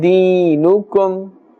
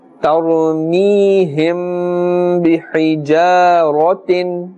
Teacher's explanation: After the mim sakin is a dal, and therefore izhar shafawi is taking place, no ghunna is taking place. Deenukum, ya sakin has a kasra before it, so this becomes a ya madda, and therefore we will pull up to the extent of one alif.